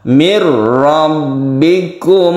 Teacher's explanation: Idgham bila guna itu adalah yang terdiri dari lam dan ro. La guna artinya tidak berdengung, tidak perlu dipanjangkan, ditasydidkan saja ke ro.